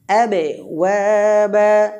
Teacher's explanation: বায়ে অল্প পরিমাণ কলকলা হবে